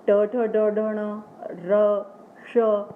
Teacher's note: मूर्धा के लिए जो जीभ है आपको थोड़ा सा हल्के से मोड़नी पड़ती है, तो तभी इसका उच्चारण आता है री, है ना, ट ठ ड ढ ण, र श।